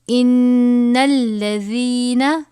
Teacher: نون مشدد ہے، غنہ کر کے پڑھیں گے.